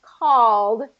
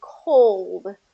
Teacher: it's the short ah sound first, called, and then cold